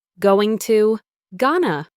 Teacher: The T sound is dropped and the O in two becomes a schwa sound.